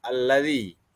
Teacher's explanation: pertama itu terdapat mad asli pada bacaan alladzi pada bacaan allzi baris kasrah bertemu dengan huruf mad di situ dibaca dipanjangkan Dua harakat